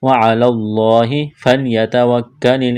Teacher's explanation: کاف میں سختی کریں گے، باریک کرنا ہے کاف کو